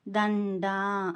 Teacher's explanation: దమ్ డా, దా పక్కన 0 ఉంది కదా, అంటే అనుస్వారం స్పష్టంగా పలకాలి. చివరన డా ఉంది, దీర్ఘం ఉండాలి, అంటే సాగదీసి పలకాలి.